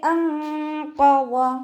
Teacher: ഖാഫ് ഇസ്തിഅലാൻ്റെ ലെറ്ററും കൂടിയാണ്, അപ്പോൾ അതിനെ നല്ലോണം തഫീം ചെയ്തിട്ട് ഉച്ചരിക്കുക.